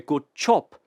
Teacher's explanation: you probably heard the J turn into a CH but what else happened the B turned into a p chop